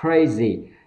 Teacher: Crazy, âm k bật hơi ra